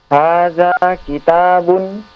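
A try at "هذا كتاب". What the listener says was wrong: Intonasinya jangan intonasi pertanyaan. Ulang sekali lagi.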